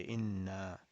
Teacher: We will not stretch this natural mud. We will just say inna. That's it, two harakat.